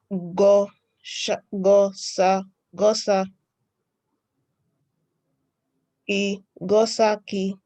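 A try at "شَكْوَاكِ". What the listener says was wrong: I think you can differentiate between sin and shin.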